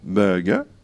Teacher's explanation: pour burger, qui vient de l'anglais, on ne prononce pas le R final